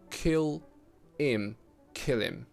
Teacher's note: Now, in the case of kill him, I ignore the h sound completely, just omit it. That's why I connect the dark L in kill and it in him directly through catenation.